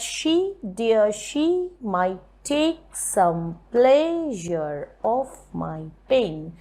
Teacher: we will not give any stress on off because it's a very minor word